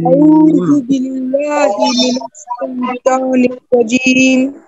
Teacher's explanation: শাইতান লম্বা করতে হবে, আবার রাজীম এখানেও লম্বা করতে হবে।